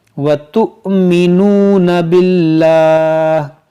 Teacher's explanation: یہاں پر دیکھیں حمزہ ساکنہ ہے اور اس واو کو نہیں پڑھا جائے گا، یہاں پر حمزہ پڑھا جائے گا، تا حمزہ پیش تو جھٹکا دے کر